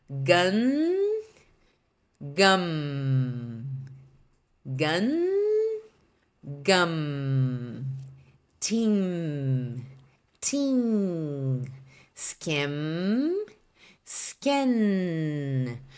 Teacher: são os sons finais das palavras com m e n Então são sons mais nasalizados